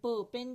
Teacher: जब आप अपना मुंह बनाते हो प साउंड निकालने के लिए, तो देखें आप पहले एयर को ब्लॉक करते हैं, उसके बाद ही लफ्ज बोलते हैं, तो इसका मतलब एयर क्या हो रही है?